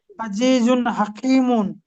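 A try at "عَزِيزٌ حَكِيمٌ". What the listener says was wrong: মাশাআল্লাহ, মাশাআল্লাহ, খুব সুন্দর হয়েছে।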